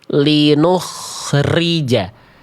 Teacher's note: Ro-nya salah. Karena getarannya berlebihan.